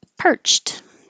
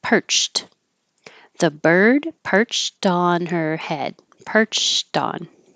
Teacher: This is an ED that sounds like a T because the final sound in the word perch is ch, which is voiceless. So then it looks like ED, but it sounds like the voiceless T.